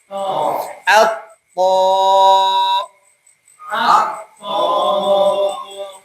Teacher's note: Bedanya ta sama th. Kalau ta itu keluar nafas. Kalau th tidak.